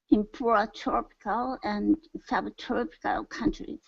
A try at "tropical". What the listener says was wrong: give me an a sound instead of tro TR go to an a open your mouth nice and wide